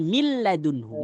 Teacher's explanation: Nunnya sudah melebur sempurna pada huruf lam. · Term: idgham